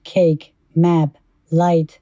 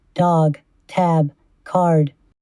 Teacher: the first three end with voiceless stops and their plural suffix ‘s’ is voiceless while the last three end with voiced stops